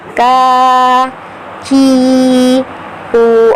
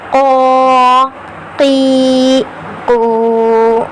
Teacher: کاف کو باریک ادا کریں گے کا کی کو, اور قاف کو پر کر کے ادا کریں گے